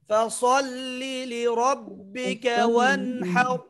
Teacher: ফাসাল্লি সদটা মোটা হবে, ফাসাল্লি রটাও মোটা হবে